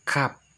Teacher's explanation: Yaitu tempat keluarnya dari pangkal lidah bagian tengah dan langit-langit mulut bagian tengah.